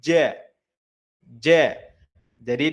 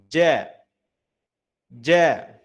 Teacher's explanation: Jadi harus terasa bagian tengah lidahnya itu naik ja. Jadi dia terasa menempel dengan langit-langit mulut atas. · Cara pelafalannya atau cara tempat keluar hurufnya ada pada bagian tengah lidah bertemu dengan langit-langit atas. Nah, bertemu di sini maknanya menempel ya Bapak Ibu ya. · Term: huruf jim